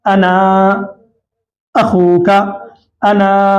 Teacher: بس قاعدہ یہی ہے کہ انا پر وقف کریں تو الف پڑھا جائے گا اور ایک الف کی مقدار یعنی کھینچ کے پڑھیں گے 2 حرکات کے برابر